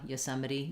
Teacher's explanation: you can really reduce that first syllable as well